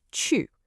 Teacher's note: The fourth tone has to be sharp, decisive, and falling. Think of it like a quick, sharp command.